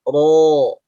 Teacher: untuk huruf ro tebal itu posisi pangkalnya dia naik. Sehingga suara yang dihasilkan itu lebih bulat.